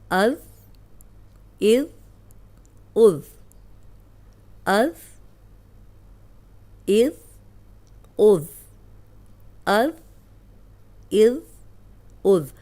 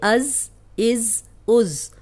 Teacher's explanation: اس میں سیٹی کی آواز نہیں آنی چاہیے. حمزہ زبر دال از، حمزہ زیر دال از، حمزہ پیش دال از، از از از، از از از، از از از. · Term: ذال